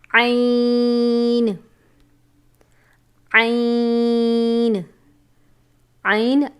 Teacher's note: عین حلق کے درمیان والے حصے سے ادا ہوتا ہے